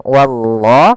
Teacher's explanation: pada lafal Allah di sini lam tebal